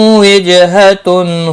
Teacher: جیم ساکن پر قلقلہ ہوگا